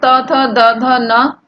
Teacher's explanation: यानी जब हम त थ द ध बोलते हैं तो हमारी जीभ जो है दांतों पर टकराती है